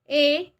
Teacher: उदाहरणार्थ ए हा संयुक्त स्वर अ प्लस रस्व किंवा दीर्घ इने बनलेला आहे इथे दोन स्वर एकत्र येऊन ए हा स्वर बनलेला आहे